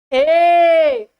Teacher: निकल रहा है और परर जाक तालू में टकरा रहा है इसमें दोनों है कंठ भी है और प्लस तालू भी है · ए आवाज कंठ से निकल रहा है और सीधे ऊपर जाके तालू में टकरा रहा है, तो इसमें दोनों है, कंठ भी है और प्लस तालू भी है, बराबर बन जाएगा कंठ बराबर क्या बन जाएंगे, तो ये बन जाएंगे कंठ तालु या तालव्य, इसको तालव्य बोला जाता है।